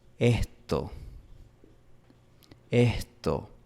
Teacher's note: La S es aspirada aquí en la costa. La aspiración es básicamente una vocal susurrada por unos milisegundos.